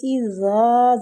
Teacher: وَإِذَا قِيلَ لَهُمْ، وہ پہ ہونٹوں کو گول کریں گے۔ اِذَا، زال نرمی والا حروف ہے اور الف مد بھی ہو رہی ہے، زال کو کھینچیں گے